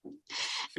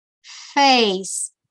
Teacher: We don't have to touch our lower lip with the teeth, but in English you have to put your upper teeth on your lower lip and leave a little bit of space, just a little bit of space, and blow the air through this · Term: the sound f